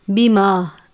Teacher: میم کی آواز پر غنہ نہیں کرنا، یعنی میم کی آواز کو ناک میں نہیں لے کر جانا، بیما نہیں پڑھنا بلکہ بیما الف کی آواز کے ساتھ پڑھنا ہے۔